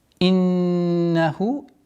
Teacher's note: четкое произношение кесры, удержание назализации в размере двух огласовок, долгота в размере, естественная долгота в размере двух огласовок даммы.